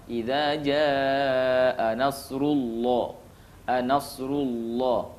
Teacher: bila dibaca dengan tebal, maka pangkal lidah kita terangkat ke atas sehingga terdengar suara yang tebal